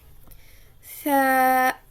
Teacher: زبان کی نوک اوپر سامنے والے 2 دانتوں کے سرے سے لگ کر ثا ادا ہوتا ہے